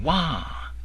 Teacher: Wah in a high, raised tone, sometimes called the third tone